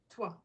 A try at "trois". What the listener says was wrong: Trois. You see the R? I know Americans have a hard time using that R. Trois. Roll the R,